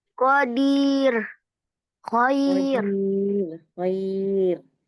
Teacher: rnya dibaca tipis ya, jangan ditebalkan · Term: ro yang dibaca tipis, ro sukun